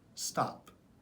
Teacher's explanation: Usually, a T has a strong T sound, but when paired with S, like in stop, the T now sounds a little bit more like a soft D sound